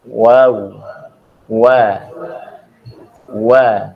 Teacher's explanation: huruf wawu ini kedua bibir agak sedikit merenggang, tidak merapat.